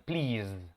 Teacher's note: traten de hacer el sonido de la vibración al final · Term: la z